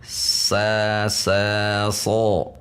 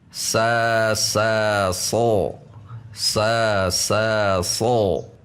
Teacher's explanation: tidak ada perubahan bibir, tidak ada perubahan ujung lidah, yang ada hanya perubahan pangkal lidah · Huruf sod memiliki sifat isti'la atau tebal, di mana makhraj huruf sod ini sama dengan huruf sin. Untuk melatihnya, sin 2 kali, sod 1 kali.